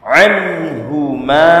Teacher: Anhu nun sukun bertemu dengan Ha ini bacaan izharul halqi dibaca dengan jelas